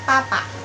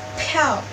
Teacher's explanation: untuk P sendiri itu penyebutannya P, tapi bedanya dia itu ada aspirasinya. Jadi ada udara yang keluar dari dalam mulut. Caranya biar tahu kalian udah berhasil atau belum nih ngeluarin aspirasi itu dengan ngelakuin pakai tisu.